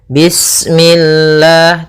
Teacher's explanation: lafal Allah ketika sebelumnya kasrah maka dia dibaca dengan tipis ya dengan L.